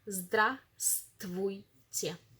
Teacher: do not pronounce this vstv. We pronounce it stv.